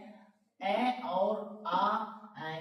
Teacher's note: ये है अ और आ। ये कंठे स्वर है।